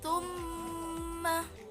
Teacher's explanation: dia harus dengung, dia agak dilamakan sedikit. Tumma itu adalah huruf dengung.